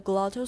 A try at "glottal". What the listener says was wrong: Okay, I say glottal, not glottal. 那个 T 是个 tap, 像个很短的 D, glottal.